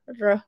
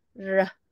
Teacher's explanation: Kalau Tamil punya bahasa reh tu dia bergulung. Reh. Dia bergulung. Tapi kita punya reh dia nipis. Reh. Dia just lalu je.